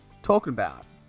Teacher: he drops the G and connects it to about. talking about. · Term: linking and reduction